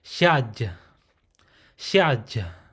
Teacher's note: Now with the closed syllable, it will be an aspirated breathy sound mixed with ya